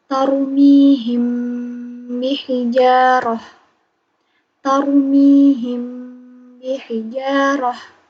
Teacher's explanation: Selanjutnya mim mati bertemu huruf ba atau itu ikhfa syafawi. Di sini ada mim mati bertemu huruf ba. Dibaca ditahan 3 harokat.